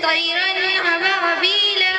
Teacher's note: نون ساکن اور تنوین کے بعد حروف ہلکی کے 6 حرف حمزہ ہا عین ہا غین کا میں سے کوئی حرف آئے تو نون ساکن اور تنوین کو ظاہر کر کر بغیر غنہ کے جلد پڑھیں گے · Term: اظہار